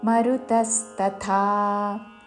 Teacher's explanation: మరుతస్తథా తా మీద ఆఘాత, మరుతస్తథా ముందు అల్పప్రాణత, తర్వాత చివరిలో మహాప్రాణత దీర్ఘముతో.